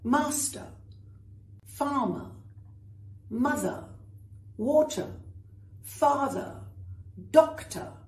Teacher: All of these have ER or OR at the end, and that R is silent. Forget it's there, except when you're writing it.